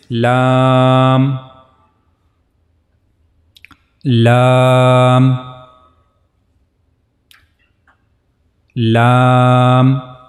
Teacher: The origin of this letter lam is tip of the tongue, and it will go connect to the gum of the two top front teeth.